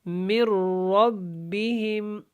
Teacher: نون اپنا وجود کھو دے گی اور اس کے اندر ادغام ہو جائے گا بغیر غنہ ، غنہ بھی نہیں ہوگا اور را موٹا بھی ہے، من